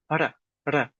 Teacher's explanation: The R's are typically rolled. Now, they're not hard rolled. ra ra But, they do have a slight roll.